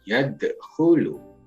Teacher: yad ini dibaca memantul karena ini namanya qalqalah sugro